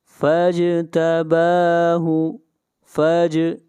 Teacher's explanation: جیم کے اوپر قلقلہ کریں گے، با کو کھینچ کر پڑھیں گے 1 الف کے برابر، با کے اوپر کھڑی زبر ہے۔